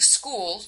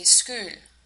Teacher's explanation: she pronounces the medial U sound as the German Ü, which is not used in English. So instead of saying school, you can hear her in the video say Skul.